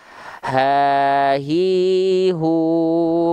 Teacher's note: pita suaranya tertutup kalau Hamzah kalau H besar dari pangkat tenggorokan keadaan pita suaranya terbuka Makanya keluar nafas · ha besar itu dilafalkan dari pangkal tenggorokan kita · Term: hak besar